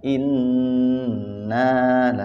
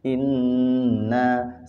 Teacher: Jadi ada penekanannya ada penahanannya ada ditahan dua harokat